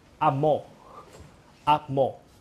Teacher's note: when I pronounce the high level tone, 5-5, precedes any tone, it becomes 3-2, the falling